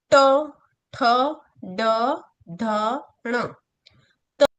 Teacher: ट वर्ग, जिसके अंदर जीभ को क्या किया जाता है? मोड़ कर बोला जाता है